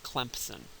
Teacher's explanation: you insert the P the voiceless bilabial stop in between the the nasal and the fricative and that makes it easier to pronounce now why a p · the P acts as a bridge between the m and the S because it has something in common with each one of them